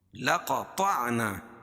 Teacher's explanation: لقطعنا قاف اور طا کو عین میں ملائیں گے اور یہ قاف طا دونوں موٹے پڑے جائیں گے